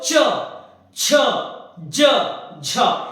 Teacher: जीभ की जो है ना वो नीचे तालू पर रगड़ रही है, यानी कि उसे थोड़ा संघर्ष करना पड़ रहा है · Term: स्पर्श संघर्षी